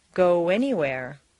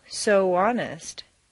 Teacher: the sound of the American O is really O-oo